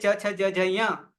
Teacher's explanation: ચ છ જ જ ય તાલવ્ય છે, તાલુ છે ઉચ્ચારણ સ્થાન, તો એ ચ વર્ગ છે 5.